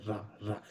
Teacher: आपकी जो जीभ है ना वो मूर्धा के टच नहीं करती है पर मूर्धा के जस्ट पास रहती है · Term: लुंठित व्यंजन